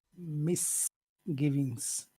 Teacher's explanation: we're putting two strong syllables next to each other and English does not like that. It likes to have big and then small and then big again and then small.